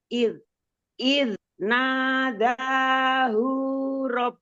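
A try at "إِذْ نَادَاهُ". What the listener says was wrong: Nah, nggak panjang itu. Id nadahu rabbuhu.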